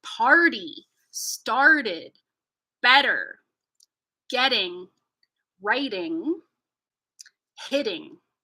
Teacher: But in North American English, we use this to represent a T that leads an unstressed syllable. So we're going to hear the flap T or the tap T in words like party, started, better, getting, writing, hitting